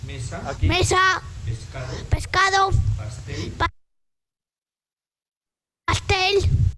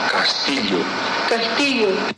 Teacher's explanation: es una S la que se le pide, pero hay una realización un poco atípica, ¿no? Es muy frecuente este tipo de, por ejemplo, en este caso de lateralización en algunos niños